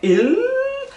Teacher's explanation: Vou falar il, com dois L's, o L coladinho no céu da boca